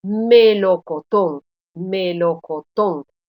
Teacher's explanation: en estas palabras yo estoy pronunciando como sílaba tónica la última sílaba la última sílaba de la palabra estas son las palabras agudas